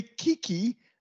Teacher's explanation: when you say Kiki the vowel is narrow